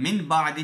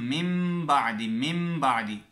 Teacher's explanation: نون ساکن یا تنوین کے بعد اگر با آ جائے تو وہاں پر نون ساکن یا تنوین کو بدل کر میم میں بدل دیں گے · یعنی بدل دیا جائے گا، یعنی تنوین کو میم سے بدل کر غنے کے ساتھ پڑھتے ہیں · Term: اقلاب